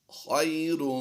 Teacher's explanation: بالحسنۃ فلہ خیر، خا یا زبر خی لمبا نہیں کریں گے، یا لین ہے